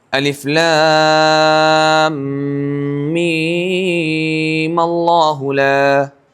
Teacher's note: تو یہاں جب ہم وصل کریں گے تو میم ساکن ہے اس کے اوپر زبر دیا جائے گا